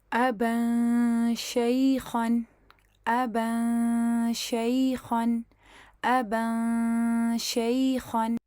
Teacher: غنہ کر کے، اور جیسے ہی ہمارا غنہ مکمل ہو جائے گا تو پھر ہمارا جو ہے ہم لوگ ایگزیکٹ شین کے مخرج پہ جا کے اس کو پھر ادا کر دیں گے۔ ابا شیخن ابا شیخن ابا شیخن۔